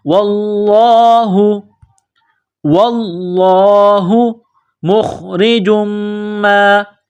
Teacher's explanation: واللہ، واو کو لام کے ساتھ پلس کرنا ہے، لام میں سختی کرنی ہے. لفظ اللہ کے نام سے پہلے زبر ہے تو لفظ اللہ کے نام کو موٹا کرنا ہے